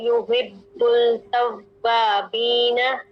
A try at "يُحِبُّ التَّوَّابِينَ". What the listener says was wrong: یحب التوا یحب ال کریں گے تو ہم لام کے ساتھ ملائیں گے لام کے ساتھ نہیں ملانا با کو ڈائریکٹ تا کے ساتھ ملانا ہے یحب التوابین